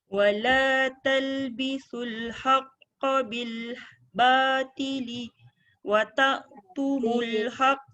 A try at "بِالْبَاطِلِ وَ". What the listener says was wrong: Bilbatili wa Bukan, li tu pendek kan. Bilbatili wa